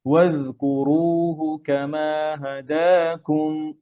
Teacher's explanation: ওয়াজকুরুহু, জালের রখাওয়া হবে